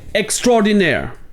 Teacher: le A et le O ne deviennent qu'une seule voyelle